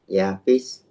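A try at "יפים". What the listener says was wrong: Ini bukan sameh, ini mem sofita. Yafim.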